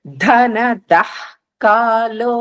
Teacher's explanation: విసర్గలు తర్వాత కాలో వచ్చింది కాబట్టి అః శబ్దం వస్తుంది